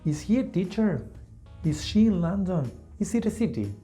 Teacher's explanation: always with rising intonation